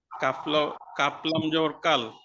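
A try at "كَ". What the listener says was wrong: হরফের নামটা একটু টান দি, কাফ লাম জবর কাল।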